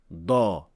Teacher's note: A heavy da is pronounced just like the normal da, with the tip of the tongue making contact with the alveolar ridge, but you will add three things. You will raise the back of the tongue, lower the middle part of the tongue, and then when these two happen, your epiglottis will automatically push back, which creates the full mouth or the heavy emphatic sound.